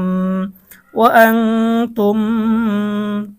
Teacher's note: নুন সাকিনের পরে ইকফার হরফ তা এসেছে গুন্না সহ পড়তে হবে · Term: ইকফার গুন্না